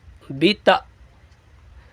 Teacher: حمزہ پہ جھٹکا دیں گے تا کے بعد